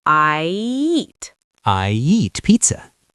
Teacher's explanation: I ends with a smile shape. So, we slide into a Y. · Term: Y bridge